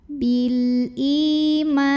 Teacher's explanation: Bil ma mad tabi'i karena ada alif yang didahului baris fathah. Maka cara bacanya dipanjangkan mimnya 2 harokat.